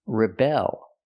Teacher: With the verb, we change the stress. We put the stress on the second syllable, rebel.